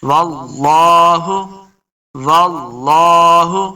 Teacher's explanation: ہا کو حلق کے نچلے والے حصے سے ادا کریں گے تب انشاءاللہ ہا کا مخرج صحیح ادا ہوگا